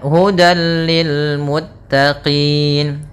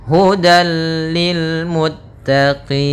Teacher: Cara membacanya idgham itu yaitu memasukkan, sedangkan bila gunnah tanpa disertai dengan gunnah. Maka tanwin dia akan dimasukkan kepada huruf lam, tapi tidak boleh ditahan, tidak boleh hudal, akan tetapi hanya idgham saja, dan dia termasuk idgham kamil yang sempurna. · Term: idgham bila gunnah